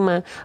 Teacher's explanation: Mim fathah bunyinya bukan mo tapi ma.